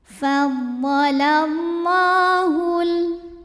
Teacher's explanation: Thobi'i muqadar karena ada baris fathah tegak di atas huruf lam cara bacanya dipanjangkan lamnya dua harakat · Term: Mad Thobi'i muqadar